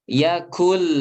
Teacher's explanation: Kunya monyong, tapi ketika sampai lam balik lagi.